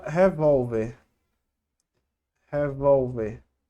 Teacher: Qual é a sílaba tônica é a penúltima terminou em que terminou em R tem R no li no chão então a gente acentua é